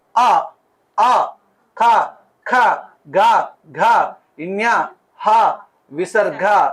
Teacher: ఇవన్నీ కంఠం ద్వారానే వస్తాయి బయటికి కంఠం ద్వారా బయటికి వస్తాయి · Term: కంట్యాలు